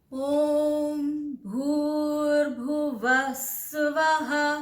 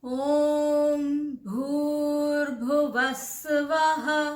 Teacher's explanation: व में मैं नीचे गई, स्वः में ऊपर गई।